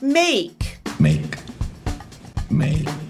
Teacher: it starts with /e/, and then transitions to a second sound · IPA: /eɪ/